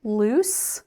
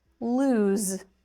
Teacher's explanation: The difference here is the unvoiced s sound and the voiced z loose unvoiced.